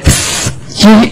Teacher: you have no vibration in your vocal cords